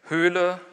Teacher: Höhle kriegt die Länge auch, weil das ein gespannter Vokal ist, dadurch, dass es betont ist. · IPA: /hølə/ ⇒ [høːlə]